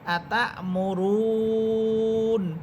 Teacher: আমরা দেখতেছি এটা আলিফ, কিন্তু আলিফের উপরে যখন সাকিন হয় তখন সেটাকে হামজা করেই পড়তে হয়, তা, হামজা সবর তা, আতা, মিম পেশ মু, র ওয়াও পেশ রু, নুন সবর না, আতা মুরুনা। এখানে থামলে নুন হরফটা সাকিন হবে এবং 3 আলিফ টেনে পড়তে হবে